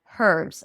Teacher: British speakers and uh South African speakers may pronounce it with an H